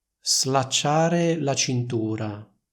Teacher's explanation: Molti studenti di italiano dicono slacciare la cintura, quindi pronunciano una S sorda